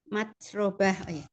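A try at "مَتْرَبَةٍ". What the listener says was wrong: Tidak panjang roknya. Mat, robah. Ro, buka. Mat, robah. Robah. Jangan pelan. Robah. Jadi, bah. Enggak, banyak enggak panjang. Bah, langsung.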